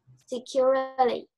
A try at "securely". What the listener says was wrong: You don't have to say the E, securely. You just say securely.